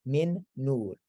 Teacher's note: the noon merges into the next noon and you double it a little bit with that nasalization